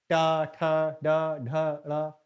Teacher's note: ट वर्ग का उच्चारण मूर्धा से होता है